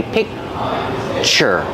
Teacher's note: When I say picture, I have the k sound, but I don't release it. So it's a stop sound. I stop the air.